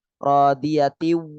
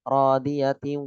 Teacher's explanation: Harus rodiyati, ada suara hidungnya.